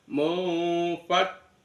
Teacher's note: Bukan mun ya, tapi di tengah-tengah antara nun sama fa seolah-olah berbunyi mim. Mufak ditahan di kaf.